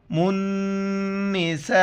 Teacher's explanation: یہاں پر الف کے اوپر مد ہے، اس کو 4 الف کی مقدار اوپر کھینچنا ہے